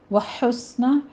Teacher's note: ہا کو وسط حلق سے ادا کرنا ہے، سین کے اوپر ہمس ہوگا، سیٹی کی آواز لے کر آنی ہے